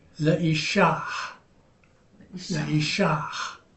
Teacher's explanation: So you voice the H, the hey.